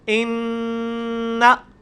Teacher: غنہ بھی 1 الف کے برابر ہوتا ہے